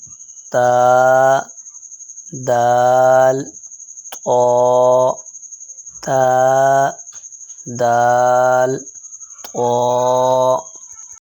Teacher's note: مخرج نمبر 12 سے 3 حروف ادا ہوتے ہیں، تا، دال، طا۔ زبان کی نوک جب اوپر والے 2 دانتوں کی جڑ سے لگے اس سے تا، دال، طا ادا ہوتا ہے